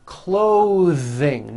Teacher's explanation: Let's look at these voiced th sounds in the middle of words. Clothing, notice how my tongue comes out in the middle of the word and the th sound is pushed out.